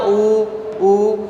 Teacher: जब भी हम ऊ उच्चारित करते हैं लिप से एक सर्कल बनाते हैं, होठ से एक सर्कल बनता है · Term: ओष्ठौ